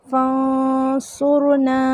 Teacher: ناک میں آواز کو چھپانا جو ہے یہ اخفا ہوتا ہے · اخفا کا لغوی معنی ہے چھپانا، اور اصطلاحی معنی ہے نون کی آواز کو ناک میں چھپا کر اظہار و ادغام کی درمیانی کیفیت کے ساتھ ادا کرنا